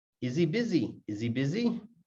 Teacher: So it's not new information, so it's not stressed. Many, many times the H will just disappear.